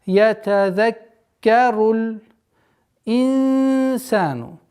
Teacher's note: Здесь у нас ихфа, сокрытие в размере двух огласовок и мягкое, потому что после нун сакина идет мягкий звук син.